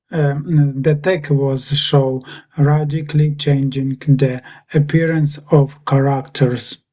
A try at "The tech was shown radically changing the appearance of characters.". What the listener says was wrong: So the you sort of missed out the N there when you were saying it. So you said show and not shown. So the N puts it in the past, sort of puts it in the past somehow.